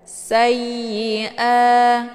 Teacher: Sayyi, tidak perlu dibaca dengung. Sayyi'ah, dibaca panjang 2 harokat. Ini dinamakan dengan mad badal.